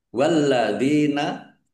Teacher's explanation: lamnya dibaca dobel, ada tasdidnya ditekan dan ditahan biar tampak dobelnya. Walladzina dalal kasroh ya sukun mad thobi'i.